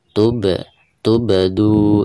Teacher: hurufba ya ketika Sukun dan cara membacanya itu harus ada pantulannya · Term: Qalqalah